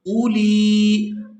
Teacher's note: یہ واو لکھنے میں آئے گی اور یہ پڑھنے میں نہیں آئے گی ، تو یہاں ہم نے حمزہ کو بغیر کھینچے ادا کرنا